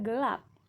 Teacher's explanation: Selanjutnya, lambang fonetis E kecil. Bunyi depannya itu sedang dan tidak bulat